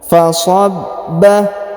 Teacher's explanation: Huruf ba berharokat tasdid, ditahan dan ditekan ya.